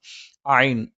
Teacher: തൊണ്ടയുടെ മധ്യം അല്ലെങ്കിൽ ത്രോട്ടിന്റെ സെൻററിൽ നിന്നാണ് ഐൻ വരുന്നത്